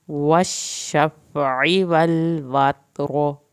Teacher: शफ़ई आइन को हल्क से पढ़ना है, फा को नहीं हिलाना।